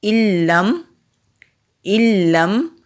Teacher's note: نون ساکن کے بعد لام کے اوپر تشدید ہے، اس لیے حمزہ اور لام کے درمیان میں نون ساکن آ رہا ہے، تو نون ساکن کو ہم حمزہ اور لام میں مدغم کر دیں گے، یعنی کہ جذب کر دیں گے، اس لیے نون کی آواز نہیں آئے گی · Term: ادغام